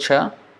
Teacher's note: the middle of the tongue is touching the top and then there is a retroflex or this is also called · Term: palatal